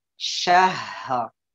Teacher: Keluarkan ya napasnya, hak memiliki sifat hamas gitu ya. Syahr. Baru ra-nya ditambahin.